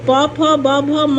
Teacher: प फ ब भ म का उच्चारण स्थान जो है वो ओष्ठ है